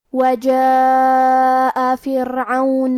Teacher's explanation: یہ مد واجب متصل ہے اور مد واجب متصل کا معنی ہے کہ حرف المد اور اس کی وجہ جو کہ حمزہ ہے دونوں ایک ہی کلمہ میں ہوں. اس مد میں ہم اپنی آواز 4 مد کے برابر لمبی کریں گے